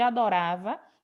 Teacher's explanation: no caso de adorava, né, a sílaba tônica seria ra